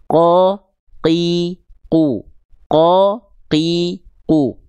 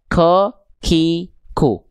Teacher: Ketika teman-teman melafalkan huruf qaf, maka tertahan nafasnya. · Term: jahr